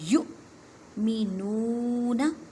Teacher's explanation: یو کو جھٹکا دے کے پڑھیں کیونکہ حمزہ ساکن ہے، جب حمزہ ساکن ہوتی ہے تو اس کو جھٹکا دے کے پڑھتے ہیں۔